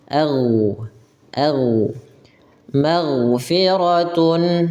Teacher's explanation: Nah, huruf gin jangan sampai mantul ya, jangan a gitu ya.